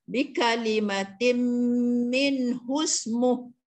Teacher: Jadi minhu tu tidak jadi panjang sebab dia kena rangkumkan, kena masukkan ke dalam huruf sin yang mati di situ, maka sebutan dia kita teruskan bi kalimatin min husmuh. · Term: tidak panjang